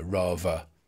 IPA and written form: ˈrɑːvə (rather)